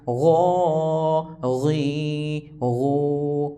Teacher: غین کھڑی زبر غو، غین کھڑی زیر غی، غین الٹا پیش غو، غو غی غو. غین کو پور پڑھنا ہے، حروف مستعلیہ یعنی موٹے حروف میں سے ہے